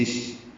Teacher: للشمس میں لام کو شین سے ملائیں گے